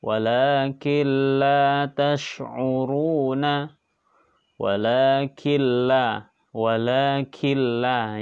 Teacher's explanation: dibaca melebur tanpa mendengung, tidak boleh berdengung ya. Kalau berdengung berarti idgham bi gunnah ya, tidak boleh berdengung, berbeda jenisnya. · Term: idgham bila gunnah